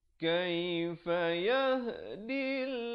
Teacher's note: Jangan baca yahdillah, itu baca tebal, salah. Kerana sebelum lafzul jalalah datang baris kasrah, dibaca nipis.